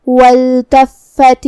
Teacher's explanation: یہاں حرف الفا پہ تشدید ہے، لہذا 2 حرف کے برابر ہم حرف الفا کو پڑھیں گے. آخری میں تا کے نیچے زیر ہے تو ہم یہ زیر ظاہر کریں گے.